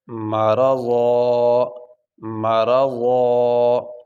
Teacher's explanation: وقف کرتے ہوئے ضاد کے اوپر ایک زبر ہم پڑھیں گے